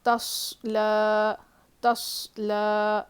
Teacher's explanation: لام پہ کھڑا زبر ہے، اس کو ایک الف کے برابر کھینچ کے پڑھیں گے